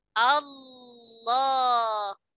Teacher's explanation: perhatikanlah mufakhamah itu pangkal lidahnya naik